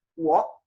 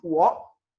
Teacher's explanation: Es un semitercer tono. Es un tono que solamente baja, pero no sube.